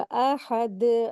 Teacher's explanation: यहाँ पर सुकून की ठहरने की वजह से यहाँ पर दाल के ऊपर कलकला करेंगे, कलकला कुबरा होगा